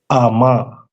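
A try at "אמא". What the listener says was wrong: Ama, right? Perfect.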